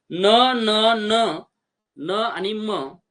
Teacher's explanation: आहेत अनुनासिके म्हणजे काय की ज्यांचा उच्चार उच्चार नाकातून उच्चार करताना नाकावाटे थोडा उच्चार होत असतो म्हणून त्यांना आपण अनुनासिकी असे म्हटले जाते